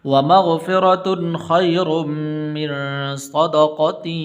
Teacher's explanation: غنہ نہیں کریں گے اس لیے کہ خا حروف حلقی میں سے ہے